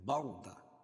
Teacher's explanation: را ساکن سے پہلے زبر ہے اس لیے را پور ہوگی